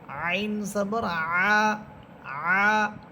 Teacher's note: আইন এটা কণ্ঠনালীর মধ্যখান থেকে হায়ের মতো। হা এবং আইন এই দুইটা হরফের মাখরাজ এক, কণ্ঠনালীর মধ্যখান।